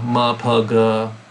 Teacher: If you say those out loud, ma, pa, and then throw a g, ma, pa, g, you'll discover the g is completely different place of the mouth as the ma, pa.